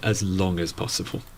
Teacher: notice the stress on long